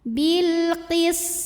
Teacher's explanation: Maka lam sukun dibaca dengan jelas atau disebut dengan idhar qamari. · sinnya desis punya sifat namanya shafir